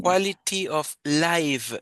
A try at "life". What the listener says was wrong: No, es life con F. Life.